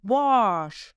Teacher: В татарском языке буква А в первом слоге читается в отличие от русского с несколько вытянутыми и напряженными губами, что придает звуку А оттенок О. Он обозначает О.